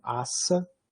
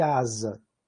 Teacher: pela diferença fonética mínima, né, que é trocar uma desvozeada por uma vozeada, trocar um S por um Z